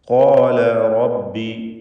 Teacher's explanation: ഖാല എന്ന് തടിപ്പിച്ച് സ്വരഭാരത്തോടെ ഉച്ചരിക്കുക. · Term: തഫ്ഖീം